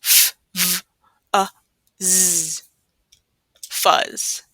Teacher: It's unvoiced, so you shouldn't feel a vibration.